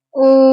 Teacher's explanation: حمزہ واو پیش او. اب یہاں پر واو ساکن سے پہلے پیش آ رہا ہے، تو یہاں پر واو مدہ ہوگا، تو اس کو ہم ایک الف لمبا کریں گے